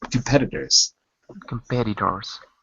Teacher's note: the t's sound like D's D like dog competitors when you say it fast